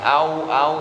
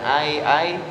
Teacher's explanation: yang au au itu dan Ai Ai itu namanya mad layin mad panjang layin lembut jadi emang kudu dipanjangin sambil dilembutin